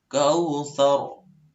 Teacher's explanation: Nah, roknya itu tebal. Jadi ketika rok tebal, maka roknya itu naik ke rongga atas